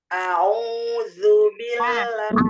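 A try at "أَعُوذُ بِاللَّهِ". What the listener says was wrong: Au, jangan au. A, au, jangan au. Iya, jadi jangan au ya.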